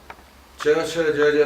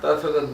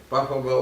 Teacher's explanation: ચ છ જ જ તાલુ છે, આ ત થ દંત છે, પ ફ બ ઓષ્ઠ્ય છે